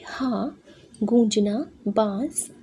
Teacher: इसके उच्चारण में हवा मुख और नासिका दोनों से निकलती है।